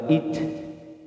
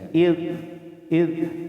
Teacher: Jadi ujung lidah ketemu dengan gigi seri atas gitu, ujungnya ketemu ujung-ujung, id wa id. Dan jangan mantul seperti dal, awas ya, bukan wa id tapi ada juga wa id, wa ij gitu ya.